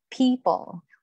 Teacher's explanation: Well, let's say people. You aspirate the first P, but you don't aspirate the second P in the middle of the word.